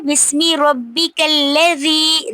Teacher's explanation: ज़ी पे याए मदा हो रही है, क्योंकि या साकिन से पहले ज़ेर आ रही है